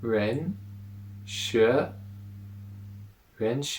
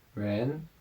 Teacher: and Sh but it's the rising tone the second tone so Rena is the second tone the rising tone